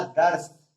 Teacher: हमारी जीभ जो है तालु को छू रही है, इसलिए यहाँ पे तालव्य सा का प्रयोग किया जाए